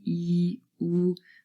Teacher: E is produced at the front, but oo is really produced more at the back of our throat